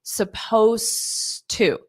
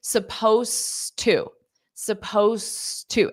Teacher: So you don't pronounce that ed. Supposed to. So you go from the s to the t of to.